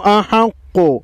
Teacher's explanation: قاف کے اوپر تشدید ہے تشدید والا حرف 2 مرتبہ پڑھا جاتا ہے